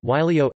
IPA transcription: ˈylæo̯sɑ